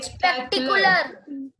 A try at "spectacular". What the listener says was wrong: Spectacular nahi, I is not there. What's it? See, read the spelling. Spelling bolo. So break the word and speak now. Spectacular.